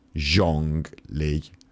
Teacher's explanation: starting with the ZH sound, it's kind of like a hard CH sound if you added a little bit of like a Z sound into it.